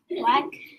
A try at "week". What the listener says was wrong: Ooh, what did you say? Weck. Does that sound like week? And we call this the bossy E, right? We have the double E. It makes the E sound, right?